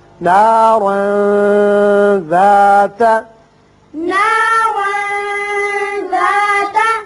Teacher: تنوین کے بعد حروف اخفا میں سے ذال ہے، لہذا یہاں تنوین کے نون پر اخفا ہوگا۔